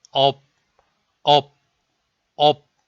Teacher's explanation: The syllable ‘업’, ‘엎‘, ‘없’ are all sounded as ‘업’. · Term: same sound of final consonant